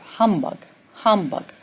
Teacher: the first syllable is stressed. The final syllable is not stressed.